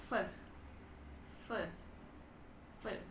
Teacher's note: Kenapa dia labio dan dental labio itu kan bibir ya teman-teman dental itu gigi jadi Fe gigi dan bibir yang disatukan gigi bagian atas dan rahang ya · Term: labiodental